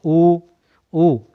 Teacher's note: हमारे होंठ कैसे हो जाएंगे, एकदम से गोल हो जाएंगे, पूर्ण रूप से वृत्ताकार